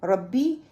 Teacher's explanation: را کو میں نے ر نہیں پڑھنا، باریک نہیں پڑھنا بلکہ را موٹا پڑھنا ہے